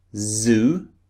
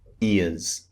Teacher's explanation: the z sound at the beginning and the end of a word is very slightly different at the beginning it's stronger